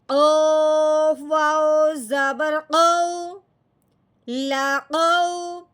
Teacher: اس واؤ ساکن پہ لین کا قاعدہ جاری ہوتا ہے، یعنی کہ اب ہم نے اس کو نرمی سے پڑھنا ہے، کھینچ کے بالکل نہیں پڑھنا